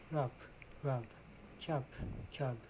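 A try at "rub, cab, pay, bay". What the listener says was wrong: Okay, I think lesson 19, you're having a lot of trouble with the P and the B consonant sounds.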